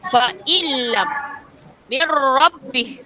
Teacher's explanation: Menggabungkan bunyi nun dengan huruf selepasnya tanpa dengung. So, masukkan huruf nun ke dalam huruf selepasnya tanpa dengung. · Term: idgham bila gunnah